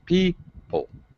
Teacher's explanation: people obviously has first syllable stress